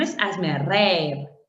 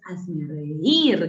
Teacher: con acento en la I, en la débil, en la cerrada. Eso es hiato acentual.